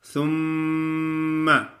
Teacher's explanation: جب میم کی ادائیگی میں ہونٹ جیسے جدا ہوتے ہیں تو بس میم کی ادائیگی ہو جاتی ہے، بعد میں آواز کو جاری نہیں رکھنا۔ کچھ لوگ ایسا پڑھتے ہیں ثم ما، ایسے لمبا کرتے ہیں تو میم الف ما بن جاتا ہے، غلط ہو جاتا ہے۔ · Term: میم مشدد